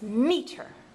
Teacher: I put more emphasis on that first syllable and it sounded better